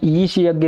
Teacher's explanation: ईष यज्ञ का उच्चारण कहां से किया जाता है तालू से किया जाता है